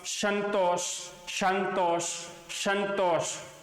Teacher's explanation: संतोष तो आराम से आपको स्पर्श का अनुभव होता है कि जीवा का जो आगे का जो भाग है ना वो ऊपर के दांतों को अंदर की तरफ से स्पर्श कर रहा है